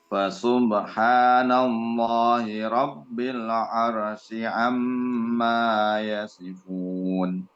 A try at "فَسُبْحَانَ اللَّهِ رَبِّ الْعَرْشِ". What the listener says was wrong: Huruf shin, arsh. Sekali lagi.